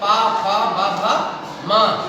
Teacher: इनको आप जब तक ओठ नहीं जोड़ेंगे तब तक आपको ये पा नहीं बोल सकते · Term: ओष्ठ स्थान